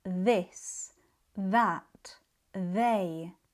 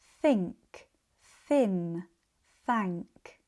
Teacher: This is because the th sound has two pronunciations. The voiced th, like in this, that, they, and the voiceless th, like in think, thin, thank. The tongue position for both sounds is almost exactly the same.